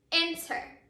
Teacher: you can hear that our accented syllable is the first syllable in that word. It is not our last syllable.